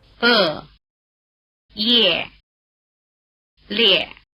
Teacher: After the semivowel written Y or I, the letter E has the same sound value as in English yet, rather than the sound value e, which it has alone.